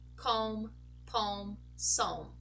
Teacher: when the L is followed by an M we also lose the sound of that L we stay we get to pronounce only the sound of the